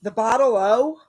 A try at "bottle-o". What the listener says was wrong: You got to say bottle O, not the bottle O. It's all one word. It's all one word. Bottle O.